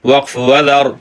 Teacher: را کے نیچے زیر ہو تو باریک، را پر سکون ہو ما قبل کی زبر کی وجہ سے موٹی پڑھی جاتی ہے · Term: را کی موٹی والی صورت